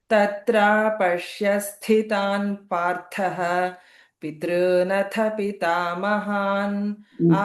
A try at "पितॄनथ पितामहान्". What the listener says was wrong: Previously, you missed that Mahaprana. Pitrunatha Pitamahan, you said. It is Pitrunatha Pitamahan.